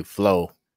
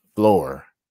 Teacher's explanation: the west coast is heavy on the r